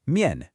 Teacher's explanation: Miàn is a neutral tone. This means it's unstressed. It's quick. It's light. No emphasis.